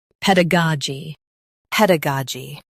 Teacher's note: Stress ga and keep ped and g light.